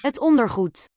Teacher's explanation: The G in Dutch is always a G. And the D, because it's the end of the word, will be a T sound